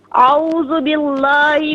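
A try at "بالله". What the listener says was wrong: باللہ نہیں ہے، باللہ. باللہ نہیں، لام کو باریک پڑھنا ہے. باللہ.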